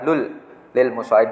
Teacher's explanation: Idgham bilahinah kita ulangi, apabila ada nun mati atau tanwin bertemu dengan lam ro. Dibaca apa? Tidak berdengung, berarti melebur jelas.